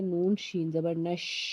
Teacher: شین جو ہے وہ حرف شجریہ کا حرف ہے، اس لیے جب ہم اس کو پڑھیں گے تو آواز منہ میں پھیلے گی۔